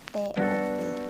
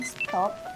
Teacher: T pada stop disesuaikan atau diasimilasikan artikulasinya dengan S yang mendahulunya sehingga sama-sama lamino palatal